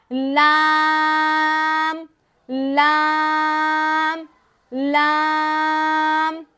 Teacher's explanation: सामने के ऊपर के आठ दांतों के मसूड़ों से लगाएंगे तो लाम अदा हो जाएगा